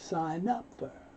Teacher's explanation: The N moves over, no sound for the G